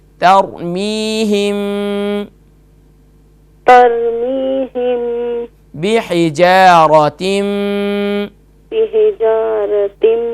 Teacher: ترميهم بحجارة. یہاں پھر را کو فل ماؤتھ کیجیے, موٹا کیجیے